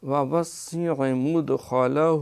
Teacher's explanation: ووسع کیونکہ سین پہ شد ہے تو یہ دو دفعہ پڑھی جائے گی۔